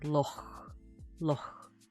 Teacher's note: It's almost like you're trying to say the K sound, but your throat isn't all the way closed, so air is still going through it, and it's coming out as that sound, like loch, loch. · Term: Voiceless velar fricative